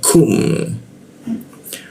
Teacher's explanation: Ma, lukum, lu posisinya di bawah hidung dia, lu, lalu masuk ke ku lagi. Ku posisinya di sikut tenggorokan lidahnya kita turunkan sehingga ada hembusan udara ketika membacanya kum.